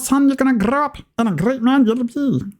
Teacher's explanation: there's a lot of that like rolling R that you hear that comes out in Scottish